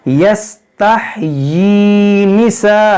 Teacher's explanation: देखिए यस्तहयी, या सीन ज़बर यस, ताह ज़बर ताह यस्तह, या खड़ी ज़ेर यी, इसको खींचेंगे एक अलिफ के बराबर क्योंकि यहाँ पर खड़ी ज़ेर है।